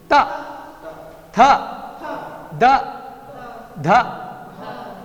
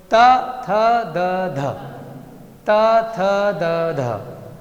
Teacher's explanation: चारों में एक ही जगह जा रही है ना, दांत के पीछे की तरफ। त थ द ध, त थ द ध, चारों में एक जैसा, इसलिए इसको एक वर्ग में ले लिया।